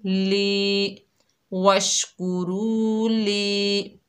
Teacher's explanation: लाम के नीचे ज़ेर है, आगे या साकिन है, ये या मद्दा है, एक अलिफ की मिकदार खींच कर पढ़ेंगे